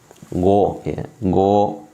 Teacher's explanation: jadi pangkal lidah naik ke atas, ya. Pangkal lidahnya naik ke atas, ya.